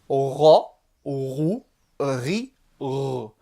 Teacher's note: le roin, comme un R français, mais emphatique, grave.